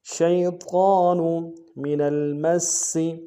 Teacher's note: نون کو لام کے ساتھ ملانا ہے، لام ساکن غنہ نہیں ہوگا